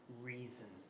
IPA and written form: ˈriːzən (reason)